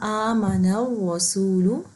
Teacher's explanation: نون کو را سے جوڑیں گے کیونکہ را کے اوپر شدہ بنا ہوا ہے